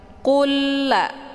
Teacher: lam sukun dimasukkan ke dalam lam yang berharokah dengan cara ditekan, dan masuknya adalah kamil, yaitu secara sempurna tanpa tersisa bunyi lam sukunnya. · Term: idgham mislain